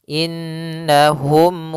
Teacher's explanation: tasydid maka kita namakan dengan bacaan ghunah maka kita tarik e kita tahan dulu suara nunnya